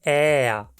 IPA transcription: ɛːa